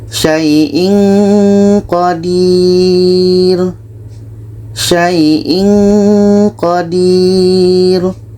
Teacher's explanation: Ketika kita baca tanwin, kita sudah merasakan huruf qaf. Maka seperti ada bunyi eng, bunyi eng. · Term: ikhfa hakiki